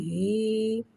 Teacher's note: یا ساکن سے پہلے زیر آ رہا ہے، یا مدہ ہو رہا ہے، لہذا یا مدہ کو ایک الف یعنی 2 حرکات کے برابر کھینچ کے پڑھیں گے، اور زیر کو نیچے گراتے ہوئے ادا کریں گے